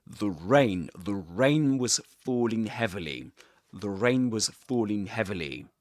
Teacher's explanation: The word is not accented here. We pronounce it with a schwa sound. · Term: weak form